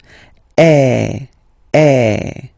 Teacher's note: the sound is really open, and normally your mouth should be opened a little bit more than with the accent aigu